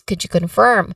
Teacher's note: the stress is on this word, which is on the second syllable firm